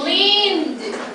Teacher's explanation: It's a long E and the ED sounds like D.